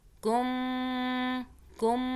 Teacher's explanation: اب یہ دیکھیں پھر میم مشدد آ رہا ہے، اوپر W بنی ہے، تشدید ہے، یہاں پہ غنہ کریں گے. میم ہونٹوں میں آپ کے دونوں ہونٹ 2 سیکنڈ کے لیے بند ہو جائیں گے، آواز ناک سے آئے گی